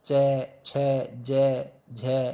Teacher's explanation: च, छ, ज, झ, ये तालु से बोले जाते हैं, तालव्य हो गया।